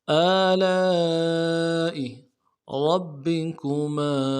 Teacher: کھینچیں گے، حمزہ کو نرم سے ادا کریں گے۔ آلاء ربکما، را کو موٹا ادا کرنا ہے، با کے ساتھ ملائیں گے، با کے اوپر تشدید ہے، زور دیں گے ، اگلے با کو نرم سے ادا کریں گے، کاف کو